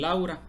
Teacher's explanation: si juntamos la a con la u se forma el diptongo Au